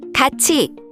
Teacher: The sound changes to ti or chi. In 같이, the tiup meets e and becomes chi.